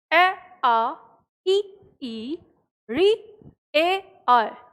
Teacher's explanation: जब आप इनका उच्चारण करते हैं तो आपको अपने आप ये चीज़ समझ में आती है कि हमारे होठ जो हैं वो फैले हुए होते हैं, गोलाकार नहीं होते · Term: आवृतमुखी